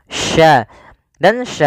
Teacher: Sya ini bagaimana cara pelafalannya dari tengah lidah kita karena makhrajnya dari tengah lidah · sya memiliki sifat namanya tafasyi. Tafasyi itu intisarus sauti fil fam, yaitu menyebarnya suara di mulut